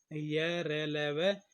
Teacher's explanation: और ये हमारे 4 व्यंजन होते हैं, य, र, ल, व, ये हमारे अंत्यस्थ व्यंजन कहलाते हैं और ये सघोष और अल्प प्राण दोनों के वर्ग में ही आते हैं, ठीक है जी। य, र, ल, व, ये सघोष भी होते हैं और ये अल्प प्राण में भी आते हैं